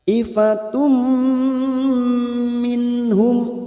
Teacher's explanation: Siap masuk dan mendengung. Masuk pada huruf berikutnya yaitu huruf mim dan ditahan selama 3 harokat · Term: idgham di gunnah